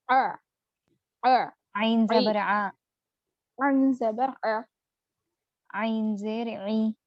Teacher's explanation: عین کا مخرج حلق کا درمیانی حصہ